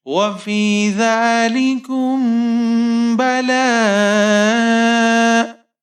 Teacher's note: کاف کے اوپر پیش ہے، میم ساکن ہے، کاف کو میم کے ساتھ ملائیں گے. اب میم ساکن کے بعد آپ کے پاس یہاں پر با ہے، تو آپ یہاں پر اخفائے شفوی کریں گے، یعنی غنہ کریں گے